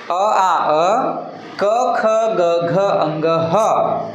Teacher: हे जे वर्ण आहेत उच्चारण करताना कंठाला स्पर्श होतात, कंठातून निघतात, म्हणून यांचे नाव आहे ते कंठ्यवर्ण म्हणून आहे।